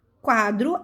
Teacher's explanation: a sílaba forte é qua